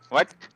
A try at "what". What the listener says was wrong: What the? It is what? Use H. There should be a sound of H before W.